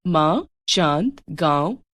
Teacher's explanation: ध्वनि वास्तव में स्वरों का गुण है। इनके उच्चारण में वायु मुंह और नाक दोनों मार्गों से बाहर निकलती है। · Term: अनुनासिक